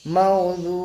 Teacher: ওয়া সাকিনের আগে পেশ ও মাদ্দাকে এক আলিফ টান দিয়ে পড়ব